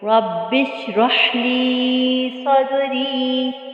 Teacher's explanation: صاد کو پر پڑھیں گے موٹا اور دال پہ قلقلہ کریں گے